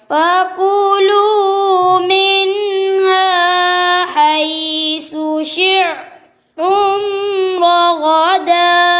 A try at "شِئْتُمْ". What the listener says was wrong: یہ شیع میں عین بنا دی ہے، یہ کیوں عین ہے؟ شئتم.